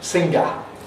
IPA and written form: ˈsɪŋgə (singer)